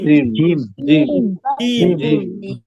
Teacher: জিমটা উচ্চারণের সময় জিহ্বার মাঝখানটা উপরের তালুর সাথে লাগিয়ে উচ্চারণ করতে হবে একটু শক্তভাবে। জিহ্বার মাঝখান উপরের তালুর সাথে।